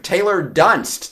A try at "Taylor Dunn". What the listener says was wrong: The ST are silent. It's just Taylor Dunn.